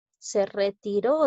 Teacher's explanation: Retiró es una palabra aguda, porque lleva la mayor fuerza de voz en la sílaba ro.